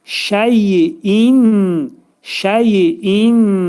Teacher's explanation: nun hərfi burunda bildirilir, açıq bildirilir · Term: izhar